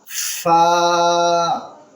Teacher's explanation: فا، اوپر کی دانت اور نیچے کا ہونٹ